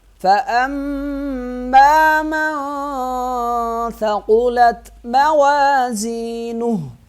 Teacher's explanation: ثقلت قاف کو موٹا پڑھیں گے، تا کو ساکن پڑھیں گے